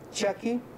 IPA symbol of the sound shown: č